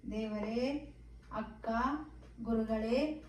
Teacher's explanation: ಪ್ಲುತ ಸ್ವರ ಇವು ಮೂರು ಮಾತ್ರೆಗಳಲ್ಲಿ ಉಚ್ಚರಿಸಲ್ಪಡುವಂತವು ಉದಾಹರಣೆ ದೇವರೇ ಅಕ್ಕ ಗುರುಗಳೇ ಹೀಗೆ ಈ ರೀತಿ ನಾವು ದೀರ್ಘವಾಗಿ ಎಳೆದುಕೊಂಡು ಬಳಸುವಂತಹ